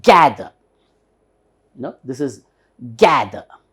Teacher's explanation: there is an upper stress here for the first syllable. So ga syllable should be hardly pronounced.